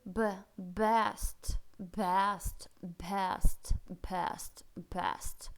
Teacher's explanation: б очень мягкий очень никакого взрывного б у нас быть не может здесь